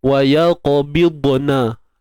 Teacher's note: Huruf dad tu kita nak konsisten, nak jaga dia, nak tebal dia, kemudian nak hati-hati tak nak bagi lantun.